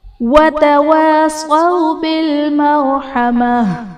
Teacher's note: مرحمہ میں را ساکن سے پہلے حرف پر زبر ہے تو را کو ہم پر یعنی موٹا کر کے پڑھیں گے